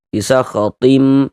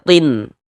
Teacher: bunyi nun sukun atau bunyi tanwinnya dimasukkan ke dalam huruf idgham bi gunnahnya, kemudian dia digunnahkan, didengungkan.